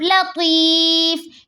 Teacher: کلمے کا حروف فا ہے، فا کے دو پیش کو ہم حذف کر دیں گے، فا ساکین ہو جائے گی، وف بنے گا وف بالاسکان.